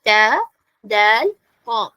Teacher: നാവിന്റെ അറ്റം tip of ദി ടങ്ങ് അവിടെയാണ് ടച്ച് ചെയ്യുന്നത് മുകളിലുള്ള പല്ലിന്റെ ഗം ലൈനിൽ അല്ലെങ്കിൽ റൂട്ട് വേര് എന്നൊക്കെ പറയാം അവിടെ ടച്ച് ചെയ്തിട്ടാണ് പറയേണ്ടത് ട ദാൽ